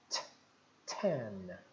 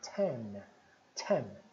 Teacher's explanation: E o N encosta no céu da boca.